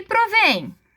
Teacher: Olha onde é que está o acento? Na última sílaba, então é uma oxítona.